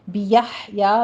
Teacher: بیحیا میں ہا کو وسط حلق سے ادا کرنا ہے، قلقلہ نہیں کرنا